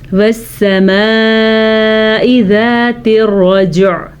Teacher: رجع میں را پر پڑھنی ہے اور جیم کے اوپر قلقلہ کرنا ہے